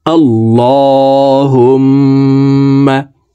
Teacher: মিমের সাথে নাকের বাঁশি থেকে তিন সেকেন্ড পরিমাণ গুন্নাহ করে ধরে রাখবো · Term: ওয়াজিব গুন্না